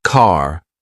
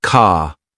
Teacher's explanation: For example, in American English, car sounds like car, while in British English, it's more like ca. It's a soft, almost invisible R sound.